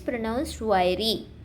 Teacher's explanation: The word is pronounced wiry. With the stress on the first syllable